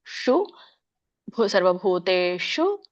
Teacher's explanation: ಮೂರ್ಧನೇಷ ಹೇಳಬೇಕು ನಮ್ಮ ಒಂದು ನಾಲಿಗೆ ರೋಲ್ ಮಾಡಿ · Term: ಮೂರ್ಧನಿ ಶ